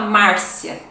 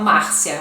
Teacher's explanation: Márcia com um R forte, né? E eles falam Márcia, um R mais suave.